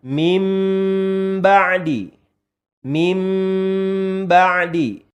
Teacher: menempelkan kedua bibir disertai dengan penekanan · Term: iqlab